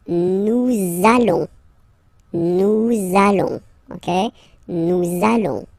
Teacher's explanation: you want to make this beautiful and little liaison, so this little link between the words, so it does mean that you will have to pronounce this z sound